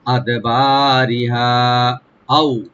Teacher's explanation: আদবারিহা আও, হামজাকে রাইট দিয়ে এখানে হারফে লিন, আও এখানে কোনো টান হবে না।